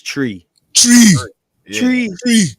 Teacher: the th they'll pronounce like a t and the T they'll pronounce like a th